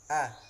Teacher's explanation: A ini huruf pangkal tenggorokan ya teman-teman, berdampingan dengan h ya. Dari pangkal tenggorokan keluarnya. Jadi huruf hamzah atau a ini dia termasuk huruf tipis ya teman-teman.